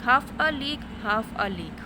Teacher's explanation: first syllable is stressed and second and third syllable is unstressed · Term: Dactyl meter